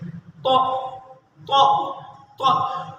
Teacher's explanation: جب ہم دا کے بعد والا تا ادا کرتے ہیں، تا دا دا کے تا کو ادا کرتے ہیں تو زبان تھوڑا سا اور اوپر جاتی ہے، تا تا تا تا۔ جب ہم طا کو ادا کرتے ہیں، یعنی موٹے حرف کو ادا کرتے ہیں، تو زبان دانتوں کی جڑوں سے جا کر لگتی ہے، تو تو تو۔ جو دانتوں کے اوپر گوشت ہے اس کے ساتھ زبان جا کر ٹچ کرتی ہے تو موٹا کر کے اس کو پڑھتی ہے، تو تو تو۔